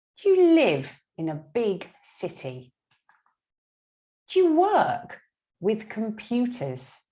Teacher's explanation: the most important word the word that is stressed is our verb live work study have · That's the most important word. The auxiliary verb do and the subject you aren't so important. They're little. We squash them together.